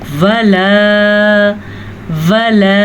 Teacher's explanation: वाव की मिक़दार पे आप ध्यान दें, बड़ी ज़बर होने की वजह से इसको हम ज़्यादा लंबा नहीं कर सकते, यानी कि वाव ज़बर व, लाम ज़बर अलिफ ला। अलिफ मदा होने की वजह से हम इसको खींच के पढ़ेंगे